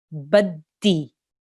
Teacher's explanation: Push on the dal, harden it, and make sure it makes a clear sound where you're joining the ba to the dal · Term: mushaddad letter